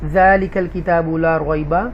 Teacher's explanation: دیکھیے یہاں پر ذالک الکتاب لا ریب، یہ ذال کھڑی زبر کے ساتھ ہے ذالک، اور یہ کاف متحرک جو ہے وہ لام ساکنہ کے ساتھ ملے گا تو کل کی آواز آئے گی